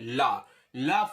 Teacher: ला fold हो जाति है और बगल से क्या निकाल जाति दोनों तरफ से आपकी हवा निकाल जाति है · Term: पार्श्विक